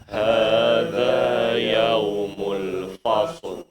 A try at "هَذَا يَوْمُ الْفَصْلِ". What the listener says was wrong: fa jangan di fo ya. Fa difathahkan yang sempurna.